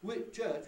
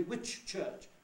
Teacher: We say the ch twice. We don't elide or shorten the first one.